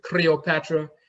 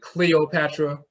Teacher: we did not have a l we had a rolling r